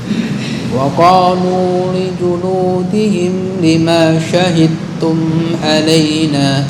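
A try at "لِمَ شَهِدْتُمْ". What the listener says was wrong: Nah, ma kepanjangan. Tajwidnya udah betul. syahid langsung digabung ke huruf berikutnya. Lima syahidtum. Lima syahidtum, bukan lima syahid, itu kepanjangan. Tapi ketika dipanjangkan artinya untuk tidak kamu menyaksikan.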